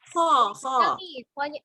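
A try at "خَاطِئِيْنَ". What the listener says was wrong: Pokoknya panjang ya Mi, 2 harokat.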